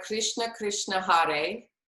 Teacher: Krishna is generally pronounced with a rolled R, and there's actually no I in there. So we don't say Krishna, we say Krishna.